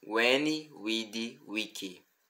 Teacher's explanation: O latim clássico não possui o som da letra V de verde, mas essa letra é o som da vogal U. Posteriormente, essas letras se tornaram duas, mas no latim, sempre que lermos uma palavra com V, devemos lembrar que é a letra U.